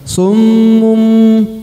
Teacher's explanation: Maka ditekan dan ditahan kurang lebih 2 sampai 3 harokat. Summum, dan didengungkan ya, didengungkan berbunyi seperti huruf mim. Ini ada tanda mimnya, disebut iklab ya.